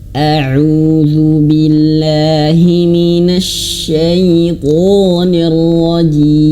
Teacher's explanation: huruf shinnya harus betul-betul mengeluarkan angin, dan ingat huruf shin bertebaran angin di dalam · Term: tafasyi